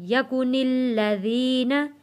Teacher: نون جڑے گا تشدید والے لام کے ساتھ